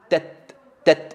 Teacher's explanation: هنا تبدأ بإغلاق المخرج تت ثم تفتح فيخرج هواء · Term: التاء الساكنة